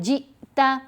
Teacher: جیم کو جب ہم نے حمزہ ساکن سے ملایا تو جھٹکا دے کر پڑھنا ہے. کسی بھی لیٹر کو حمزہ ساکن سے ملائیں گے تو آواز میں جرک ہوگا، جھٹکا پیدا ہوگا.